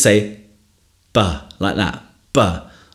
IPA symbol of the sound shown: { b }